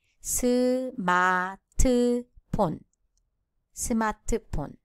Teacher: There is no F sound in Korean and it is replaced with consonant P. So the pronunciation will be smartphone.